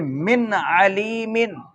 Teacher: غنہ نہیں کیا جائے گا اور ظاہر کر کے پڑھا جائے گا، اس کو اظہار کہا جائے گا۔